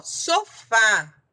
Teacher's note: a sílaba tônica é a última, o fá é uma oxítona terminada em A, levou acento.